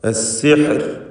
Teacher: അസ്സിഹ്ർ എന്ന് വഖഫ് ചെയ്യുമ്പോൾ റായിൽ തർക്കീഖാണ് വരുന്നത് എന്ന് ശ്രദ്ധിക്കുക.